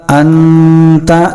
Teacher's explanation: حمزہ، نون، زبر ان، تا، زبر تا، انتا، اس طریقے سے پڑھیں گے۔ نون کی آواز ناک میں چلی جائے گی۔ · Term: اخفاء